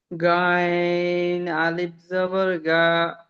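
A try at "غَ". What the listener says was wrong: গা নয়, গ। একালিপ করে টান দেন, প্রত্যেকটা একালিপ টান হবে।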